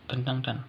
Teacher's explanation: Bunyi nasal pada kata tentang diucapkan apikudental karena bunyi yang mengikutinya, yaitu T, termasuk apikudental. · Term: asimilasi fonetis